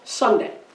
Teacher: here they just say it real fast Sunday and you're here you hear more of the Sun than you do the day so therefore son is stressed and day is unstressed · How many syllables are in the word Sunday? Two. Where is the stress? On sun or on day? The stress is on sun.